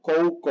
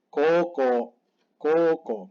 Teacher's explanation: hay que hacer doble o es un sonido largo no es o es dos tiempos